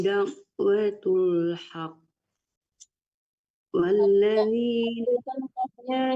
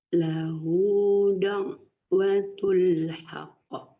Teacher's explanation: Ditasdidkan dulu baru dipantulkan.